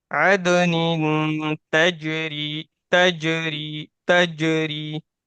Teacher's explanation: تو جیم بھی حروف قلقلہ میں سے ہے یہاں پہ اور دال بھی ہے تو دونوں میں قلقلہ کریں گے